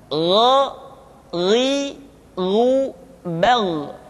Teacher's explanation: Kha mengalir nafas dan G tidak mengalir nafas dan keduanya memiliki persamaan yaitu memiliki sifat alisti sehingga kedua huruf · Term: huruf g